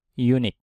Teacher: meskipun setelah ini huruf hidup u, tapi suaranya adalah y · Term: consonant sound